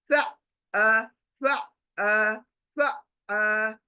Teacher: हलक के अंदर से आइन आ रहा है